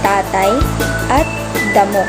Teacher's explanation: Ito ay kung ang dulo ng ating dila ay dumidiit sa loob ng itaas na ngipin na lumilikha ng mga tunog na th T at D. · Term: pangipin o dental